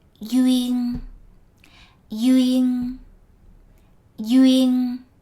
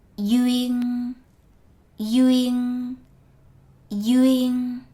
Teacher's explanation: Letter D is pronounced as Y, and the final N is pronounced as a NG.